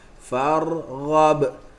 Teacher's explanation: Siapa boleh dengar, dia boleh dengar ada sikit getaran pada huruf ra. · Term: tikrar